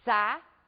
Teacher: ao pronunciarmos a palavra saída, nós podemos observar que as vogais ficam em sílabas separadas. São duas vogais pronunciadas com a mesma intensidade. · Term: hiato